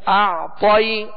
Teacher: طا کو پر پڑھیں گے اس لیے کہ حروف مستعلیہ میں سے ہے